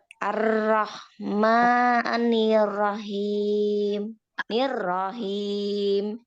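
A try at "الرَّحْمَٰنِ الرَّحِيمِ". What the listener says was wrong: Nah, ini takrirnya harus direm.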